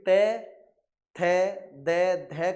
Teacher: त थ द ध का उच्चारण जब आप करोगे तो आपकी जीव दांत पर लगती है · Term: दंत वर्ग